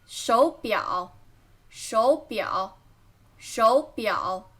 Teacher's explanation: When there is 3 third tone, you should pronounce the first one into second tone.